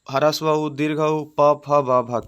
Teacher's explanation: ओष्ठ से होता है ह्रस्व उ दीर्घ उ प फ ब भ के।